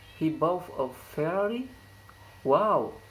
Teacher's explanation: Wow! The high fall intonation occurs in word wow to express exclamation.